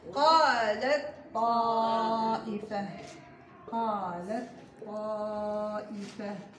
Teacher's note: سوف تدغم التاء في الطاء فتصبحان حرفا واحدا مشددا، هنا إدغام تام أكمل ما يكون